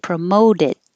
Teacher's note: if you don't release it your tongue stays in the t position